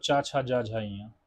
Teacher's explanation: चवर्ग का उच्चारण स्थान तालु है। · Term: तालव्य व्यंजन